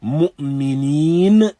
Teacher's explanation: And so when we say mu'mineen, noon has its origin that we'll look at, but the elongation neen, then that finds its place of origin in this open void, in this open space